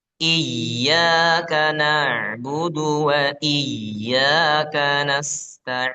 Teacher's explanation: Wa iya jangan ditahan huruf ya itu enggak perlu ditahan. hanya sekedar ditekan